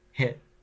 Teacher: there's a catch in the throat